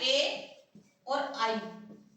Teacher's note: ए और आई ये हमारे किससे बोले जाते हैं कंठ ताल से बोले जाते हैं